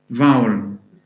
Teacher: Now the vowel would have ow, as in tower, plus a schwa